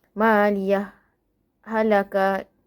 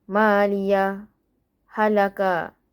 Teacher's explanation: Kemudian untuk kalimah maliyah dan halakah di dalam surah Al-Haqqah ada dua cara bacaan. Yang pertama ialah dibaca jelas bersama saktah latifah dan yang kedua ialah dibaca dengan idgham iaitu memasukkan.